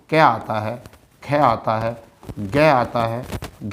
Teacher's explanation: जो आपका क वर्ग होता है वो आपका होता है कंठी